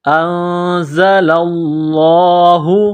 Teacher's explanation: انزل اللہ، زا میں سیٹی کی آواز پیدا کرنا ہے. لفظ اللہ کے نام سے پہلے زبر ہے، لفظ اللہ کے نام کو موٹا کرنا ہے